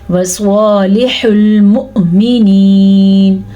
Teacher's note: سواد کو پر پڑھنا ہے کیونکہ سواد ان 7 حروف میں شامل ہے جو پر یعنی کہ موٹے کر کے پڑھے جاتے ہیں. پر کا مطلب ہے لفظ کو موٹا کر کے پڑھنا، منہ بھر کے پڑھنا.